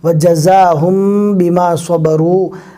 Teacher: دیکھو جزم والے میم کے بعد با آیا ہے، یعنی یہاں پر میم ساکین کا اخفا ہوگا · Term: اخفائے شفوی